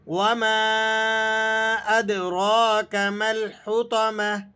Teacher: یہ مد منفصل ہے، یعنی مد جائز ہے، اگر اسے کم بھی کھینچا جائے تب بھی درست ہے، لیکن بہتر یہ ہے کہ اسے 4 الف کے برابر کھینچ کر ادا کیا جائے۔